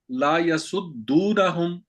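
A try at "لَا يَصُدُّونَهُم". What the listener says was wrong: लाम को थोड़ा सा लंबा कर दिया ना आपने।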